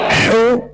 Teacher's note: ہا پر پیش ہے، اس کی ادائیگی میں ہونٹوں کو کامل گول کریں گے